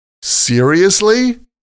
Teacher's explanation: Now, sometimes we just say, seriously? With rising intonation. Seriously? This is another way to show that what you heard is surprising.